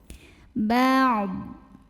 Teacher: Huruf ain dibaca jelas, huruf bod disukunkan dan harus tetap terbaca ya. Tapi jangan dipantulin ya, karena bod ini bukan huruf pantul.